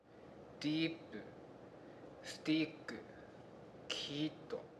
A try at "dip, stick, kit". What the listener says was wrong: And the second one, he was prolonging the sound.